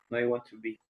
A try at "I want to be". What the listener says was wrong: Yeah, that's right. Correct. That's how you say it in English.